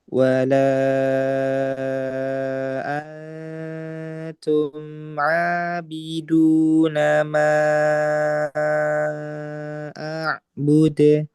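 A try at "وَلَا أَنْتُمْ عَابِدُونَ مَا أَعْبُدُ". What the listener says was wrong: Nah, dalnya masih ada udara.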